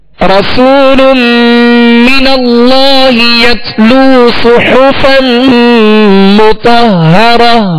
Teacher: صاد کو پر پڑھیں گے، سیٹی کی آواز پیدا ہوگی، ہا کو وصل حلق سے ادا کریں گے.